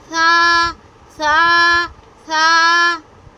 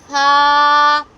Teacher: اس کو سا نہیں پڑھنا، اس میں سٹی کی آواز واضح نہیں کرنی ہے، اس کو نرمی سے ادا کریں گے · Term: حرف ثا